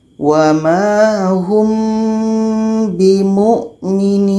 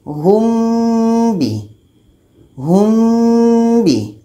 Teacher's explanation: Hum bi samar dan dua-duanya pada bibir. Hum bi. Hum bi dengung 2 harakat. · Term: ikhfa syafawi